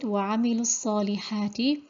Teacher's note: So we have hadaf of waw in wasl and ithbat in waqf. So because of the meeting of two sukoons, the waw madiyya is dropped, the mad letter is dropped